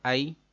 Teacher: یا ساکن سے پہلے زبر ہے، سبق 9 میں آپ پڑھ چکے ہیں کہ حروف لین 2 ہیں، تو یا ساکن سے پہلے زبر آئے تو یا لین ہوتا ہے، لمبا نہیں کرتے